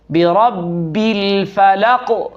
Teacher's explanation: یہاں قاف پر قلقلہ کریں گے